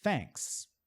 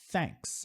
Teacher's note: Olha só, não estou fazendo som com a garganta. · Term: TH sem voz